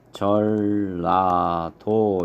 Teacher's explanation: 니은하고 리을하고 만나서 니은이 리을로 이렇게 바뀝니다. 그래서 발음을 하면 전라도 이렇게 발음을 하는 유마 현상에 해당이 된다 라고 볼 수 있죠.